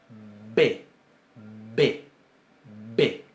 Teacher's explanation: ese sonido no lo podemos estirar indefinidamente · Se cierra completamente el conducto bucal y se abre de golpe. · la Bet con dagesh, con un puntito en el medio, que va a sonar bilabial, B, es oclusiva. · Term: oclusivas